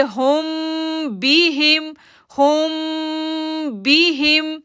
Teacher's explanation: یہاں پر ہم جو ہے وہ میم ساکن کے بعد با ہے تو یہ پھر اخفا شفوی ہے، یہاں پر ہم اخفا غنہ کریں گے